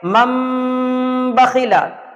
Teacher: تنوین ہو یا نون ساکن ہو، اس کے بعد اگر با آ جائے گا تو اب نون کی آواز نہیں رہے گی، بلکہ وہ نون کی آواز میم سے بدل جائے گی، اور ہمیں گنہ اور اخفا کے ساتھ پڑھنا ہے، یعنی اس طریقے سے پڑھیں گے من بخیلا۔ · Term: اقلاب